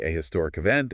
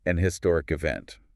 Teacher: Depending on the speaker's accent, they might pronounce the H sound or they might drop it. If they drop the H, it sounds more natural to use an before it.